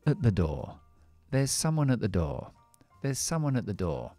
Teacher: este at, por supuesto, fonéticamente, vamos a debilitarlo y dejarlo en schwa. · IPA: ə